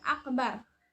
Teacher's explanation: pengucapan huruf yang disertai bergetar secara berulang pada ujung lidah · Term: taqrir